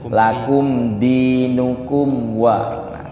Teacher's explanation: mimnya jangan ditahan loh Pak, tidak didengungkan, tidak ditambahi dengung panjang, tapi biasa aja ya.